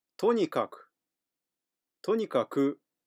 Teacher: 強調すると後ろが少し高く発音されます